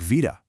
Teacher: in modern Greek, beta is actually pronounced with a V sound